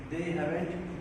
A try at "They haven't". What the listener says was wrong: So, see, when you say it fast, the V becomes B. You're saying haven't. Haven't. Not haven't. Haven't. Slow. Haven't. No. Slow. No, haven't. Haven't.